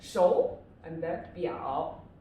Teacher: it should be the second tone and the third tone